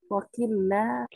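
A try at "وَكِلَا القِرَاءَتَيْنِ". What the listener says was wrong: Tidak pakai tasdid. Kilal qira'atain.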